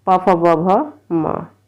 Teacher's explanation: दोनों ओठों से बोला जाता है, इसको बोलते हैं ओष्ठ्य